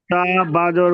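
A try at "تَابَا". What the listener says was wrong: টান দিতে হবে তাবা তাবা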